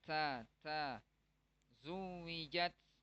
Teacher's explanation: Jadi ada hamesnya. Karena huruf ta itu dia sifatnya hames. Ya, ada keluar napas.